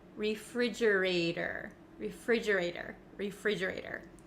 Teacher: Now, the ater, the T at the end of this word, it becomes a flap T in American English. That means it kind of sounds like a soft D sound.